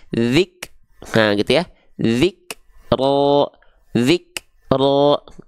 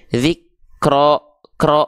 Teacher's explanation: huruf Kaf di sini dia bukan mengalir nafas tapi cuman berupa percikan nafas saja